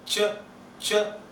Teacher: And then a little back part, you say ch, ch, laminal region, that's behind the tip of the tongue